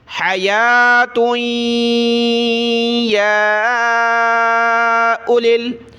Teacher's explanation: حیا پڑھا، اس کے بعد تا کو یا کے ساتھ ملایا، یا کو کھینچیں گے کیونکہ کھڑا زبر اور مد ہے ، حیات یا اولل، واو کو نہیں پڑھنا، اس کو اولل